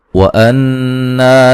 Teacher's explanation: یہاں نون مشدد پہ غنہ ضروری ہے